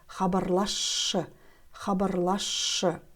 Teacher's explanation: При произнесении слова «хабарласшы» звук «с» сливается со звуком «ш» и произносится как «ш».